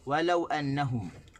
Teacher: tak boleh tekan di waw, kita kena tekan di lam